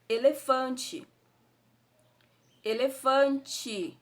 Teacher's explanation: Então, não sai o som do I, elefante, mas a escrita é com E